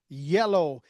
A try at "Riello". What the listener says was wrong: No, it's with the R, Riello.